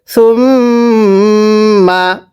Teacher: সা মিম পেশ সুম, মিম জবর মা, সুম মা। মিমে যদি তাসদিদ হয় গুন্নাহ করে পড়তে হয়।